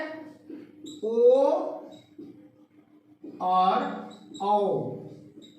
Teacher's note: ये कंठ, कंठ जमा ओष्ठ, इसीलिए ये कंठौष्ठ